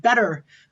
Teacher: especially in a in a north american accent where the t becomes like a flap